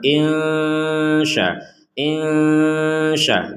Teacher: ada nun sukun bertemu shin, maka kita membacanya dengan samar.